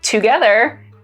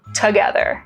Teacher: Another remarkable feature of Chicano English is that there's less vowel reduction.